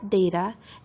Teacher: For example, in the word data, the second syllable, which is weak, is shorter than the first, is less loud, and has a vowel that cannot occur in strong syllables